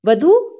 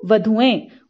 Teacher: वधू के बड़े ऊ को छोटा ऊ हो जाएगा, उसके बाद ए जोड़ा जाएगा, वधू, वधुएं।